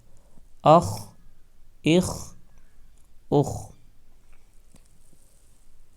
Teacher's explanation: خا حروف مستعلیہ میں سے ہے، اس لیے ہم خا کو موٹا پڑھیں گے۔ حمزہ خا زیر اخ، حمزہ خا پیش اخ، اخ اخ اخ۔